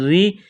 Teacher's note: را کو باریک کرنا ہے زیر کی وجہ سے